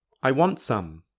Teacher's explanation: a sentence for example do you have cake I want some here sum has the full vowel instead of the reduced vowel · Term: strong form